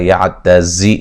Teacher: زا کو سیٹی سے ادا کریں گے